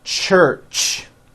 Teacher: When you put these two sounds together, you get a ch, ch. It's an unvoiced sound, and you can hear the sound, for example, at the beginning and at the end of the word church. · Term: CH sound